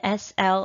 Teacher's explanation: you can clearly hear both the s and the l sounds at the beginning of the word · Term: consonant blends